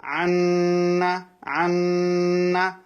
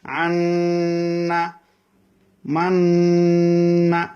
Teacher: নুনের মধ্যে তাসদিদ হলে কিভাবে গুণনা হয়, আওয়াজটা নাকের বাসের মধ্যে যাবে, গিয়ে দুই আলিফ সমান অপেক্ষা করতে হবে